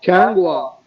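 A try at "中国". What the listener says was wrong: चांग ना चांग या नहीं ना चोंगिया, ये चोंग चोंग चे वाओ नून गाफ, चोंग गोवा, गाफ वाओ अलीफ, गोवा। वो इंडियन सिटी नेम है ना गोवा, तो ये गोवा कहते हैं कंट्री को, चोंग गोवा।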